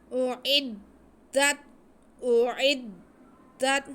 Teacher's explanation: اعدت اعدت، حمزہ نرمی سے، عین ذرا دھیان سے تاکہ حلق سے ادا ہو جائے، اس کے بعد عین کے نیچے زیر ہے اور دال پہ شد ہے تو عین کو ہم دال سے ملائیں گے · عین حلق کے سینٹر سے ادا ہوتا ہے